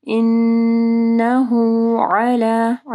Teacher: عین کو واضح پڑھنا ہے، پھر کھڑی مد کو پڑھنا ہے